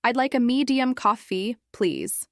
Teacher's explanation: I'd like a medium coffee, please uses polite rising intonation on please.